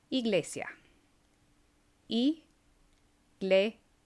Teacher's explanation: Our next vowel is the letter E. And it sounds like the long E in English, but much shorter.